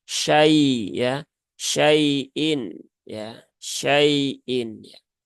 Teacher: Jadi cukup tunaikan ya yaknya satu harokat, shinnya satu harokat. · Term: huruf lin